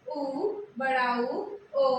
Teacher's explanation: वृत्तमुखी वे स्वर होते हैं जिनमें ओठ गोलाकार होते हैं।